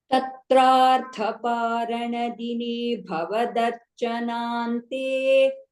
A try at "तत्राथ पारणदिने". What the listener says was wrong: Tatratha. Tatratha ಹೇಳ್ತಿದ್ದೀರಾ ತತ್ರಾರ್ಥ ಅದು ತತ್ರಾರ್ಥ ಇಲ್ಲ